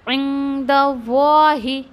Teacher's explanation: ये वाही द वाही, ये जो साउंड है ना हैवी का है, तो लफ्ज़ुन जलाला का जो लाम है वो हैवी पढ़ा जाएगा